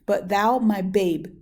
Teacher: but thou does not strike me as being a stressed syllable